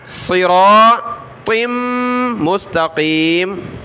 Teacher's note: طا کو آگے میم کے ساتھ ملائیں گے، ناک میں آواز پیدا کریں گے